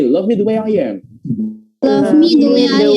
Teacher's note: pengucapan I ketemu dengan vowel atau huruf vokal, maka di situ nanti akan ada tambahan Y di situ